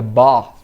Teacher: No norte da Inglaterra seria bath, fazendo com som de F mesmo